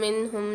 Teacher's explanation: منہم میں نون ساکن کے بعد اظہار ہلکی کے 6 حروفوں میں سے ہا آ رہی ہے تو یہاں پر بھی اظہار کر کے پڑھیں گے، غنہ نہیں کریں گے۔